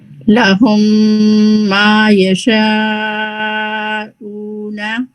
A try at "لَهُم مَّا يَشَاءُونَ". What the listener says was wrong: اس کی ٹون بہت اچھی تھی. بس اینڈ میں نون فتحہ نہ اونا. لہم ما یشاءون. بس یہ جو ماں میں بھی نا بہت ماؤتھ کو کریں آرام سے ریلیکس ہو گئے.